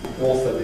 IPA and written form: ˈɔːθə (author)